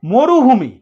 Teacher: এবার দেখো মরুভূমি, ম ছিল, এবার ওকা নিয়ে এসছে সংবৃত, মো, ঠোঁটটা গোল হয়ে গেছে